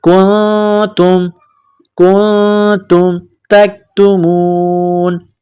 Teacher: کاف کو نون کے ساتھ ملانا ہے, کاف کو باریک کرنا ہے. نون ساکن کے بعد تا ہے تو یہاں پر غنہ کیا جائے گا